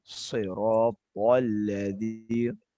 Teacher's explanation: Tebalkan lagi huruf to-nya